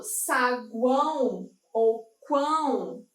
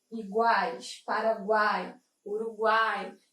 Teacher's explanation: a nasalização em saguão e quão vai classificar essa ideia de um tritongo nasal